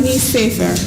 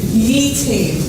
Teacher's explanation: the nun, it's called assimilation. It becomes assimilated into the next letter.